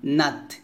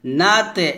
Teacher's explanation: তা হচ্ছে হামসের হরফ এখানে বাতাস বের করবেন তবে কলকলা করা যাবে না